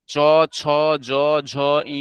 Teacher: চ ছ জ ঝ ই উচ্চারণের সময় শ্বাসবায়ু তালুতে স্পর্শ করে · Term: তালব্য